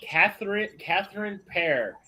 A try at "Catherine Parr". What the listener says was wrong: Catherine Parr, not Pear.